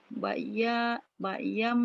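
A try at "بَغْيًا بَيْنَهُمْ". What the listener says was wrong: Ada G ditekan. Bagyam. Bagyam. Bainahum. Bagyam. Bainahum.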